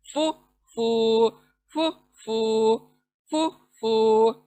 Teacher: आपके ऊपर के जो दांत हैं दो, नीचे होंठ को टच होंगे, गीले गीले जगह पर टच होंगे, तब जाकर ये आवाज आएंगी, फू फू फू फू फू फू।